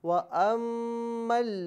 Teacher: अब चूँकि ये असल में है अनमा, तो नून साकिन के बाद फिर मीम आ रहा है, तो नून साकिन यानी मीम का ताल्लुक़ हरूफ यरमलून से, तो नून साकिन को मीम में हम मिलाएंगे। नून साकिन की यहाँ पर आवाज़ नहीं आएगी बल्कि मीम की आवाज़ होगी और यहाँ पर इदगाम माअल गुन्ना किया जाएगा।